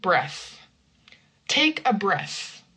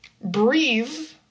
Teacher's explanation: Breath the noun is not voiced.